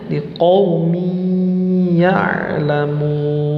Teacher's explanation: Perhatikan di bagian mi, di sana ada tanwin kasrah, maka dimasukkan ke huruf ya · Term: idgham bi gunnah